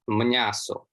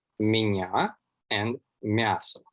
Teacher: what's very interesting about all of the Rusyn varieties is that the palatalized m sound became mn.